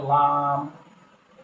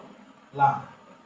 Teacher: 8 নম্বর মাখরাজ জিহ্বার আগার কিনারা উপরের মাড়ির সঙ্গে লাগাই। জিহ্বার আগার কিনারা এবং উপরের মাড়ির সাথে লাগাইয়া একটি হরফ, সেটা হলো লাম